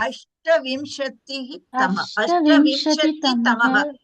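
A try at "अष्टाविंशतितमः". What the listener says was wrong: There is no visarga in between. Ashtavimshati tamaha. Don't go Ashtavimshati tamaha. Just go Ashtavimshati tamaha. Okay, the original number may be Ashtavimshatihi, but you have to drop the Visarga Anta, go with the Pratipadika Ashtavimshati and then add Tamaha.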